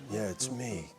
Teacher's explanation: it's actually kind of a very breathy, low register bedroom voice.